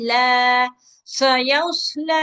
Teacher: लाम पे खड़ा जबर, आवाज दो हरकत तक लंबी होगी।